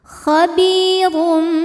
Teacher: Karena ro ini berbaris di atas yaitu barisnya dhammah tanwin. Maka cara bacanya ditebalkan. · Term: tafkhim